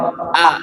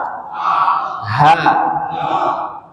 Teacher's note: Yang di bawah tenggorokan ada huruf hamzah a sama ha. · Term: tenggorokan bawah